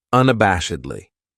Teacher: That second syllable has that schwa, that sound, unabashedly.